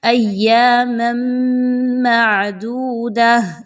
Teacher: ایک میم کی 2 زبر کی تنوین کو دوسرے میم کے ساتھ ملائیں گے تو یہاں پر ادغام مع الغنہ ہوگا۔ مع الغنہ میں کیا ہوگا کہ آپ نے غنے کو کرنا ہے پراپر طریقے سے۔